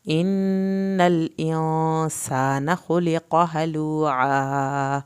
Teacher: ان الانسان خلق ہلوعا، نون کی شد پہ ہم نے دیر لگائی ایک الف کے برابر، نون کی زبر کو لمبا نہیں کرنا، خلق قاف کو پر کرنا ہے، ہلوعا عین کو حلق سے پڑھ کے الف پورا ادا کرنا ہے